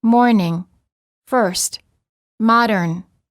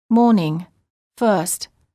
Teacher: R before a consonant. The R before a consonant is also always pronounced in American English, but generally not pronounced in British English.